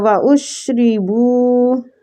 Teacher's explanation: را کو کسرہ کی وجہ سے باریک پڑھیں گے ، بو وہ مد کے ساتھ ہے